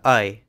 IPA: əɪ